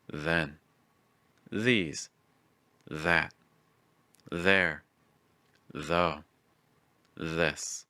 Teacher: The next sound is our voice TH sound. Make sure your throat vibrates as the tip of your tongue touches either your top front tooth or your bottom front tooth.